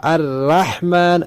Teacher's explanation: اس نے پڑھا الرحمن، را کو باریک کیا